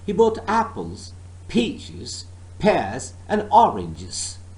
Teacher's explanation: you notice that i did not stress he and both but i stressed first part of apple and then peaches pears oranges